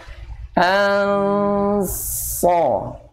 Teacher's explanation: Istilahnya pangkal lidahnya naik, kemudian itbaq, lekat dengan langit-langit.